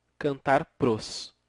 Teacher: aqui que nós foneticamente segundo a fonética podemos chamar de crase eram duas vogais e aqui ficou uma Só houve a fusão